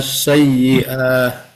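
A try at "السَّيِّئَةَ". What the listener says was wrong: Iya, ini kayaknya ada yang semangatnya luar biasa jadi pendek, jadi dipanjangin urusannya. Ini diperpanjang jadinya karena semangatnya.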